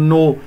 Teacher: يبين الله، نو الله، انتبه، ليس نو الله، نو، نون مرققة ومضمومة نضم الشفتين فيها، فإذا بما أنه مضموم قبل اسم الجلال الله تفخم اللام.